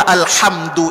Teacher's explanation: tak semua orang yang membaca alhamdu itu pakai hak kecil yang di tengah tenggorokan